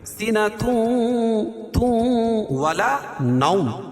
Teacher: تنوین کے بعد ادغام مع الغنہ کے 4 حرفوں میں سے واو ہے تو یہاں غنہ کر کے پڑھیں گے